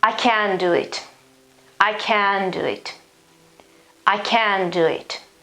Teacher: so i don't change the vowel i don't pronounce the t